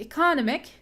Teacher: primary stress is on the penultimate syllable second from the end